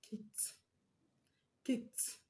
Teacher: The ed at the end of kick is going to be pronounced as t, because the last sound of the root word kick ends in k sound, which is one of the voiceless consonants that I gave you.